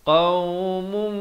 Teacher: Qaumum, di sini idgham biqunnah. Tanwin bertemu mim, daripada qaumun jadi qaumum.